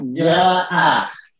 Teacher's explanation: Cara membacanya adalah dipanjangkan 2 harokat. Itu wajib ya, dipanjangkan 2 harokat. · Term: mat wajib